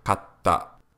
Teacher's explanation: For example, if you insert a small tsu between ka and ta, the T consonant sound of ta is also pronounced at the end of the first character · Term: double consonant sound